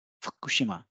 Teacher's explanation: the devoicing is taking place only for this u between f and k